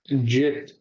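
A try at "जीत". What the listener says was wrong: Okay, it's E matra. So it's not jit, it's jeet. Jeet. Okay, so when we say jeet, what I normally do, I try to tell you all to put an I bar on top of I. So you say that you have to emphasize on E.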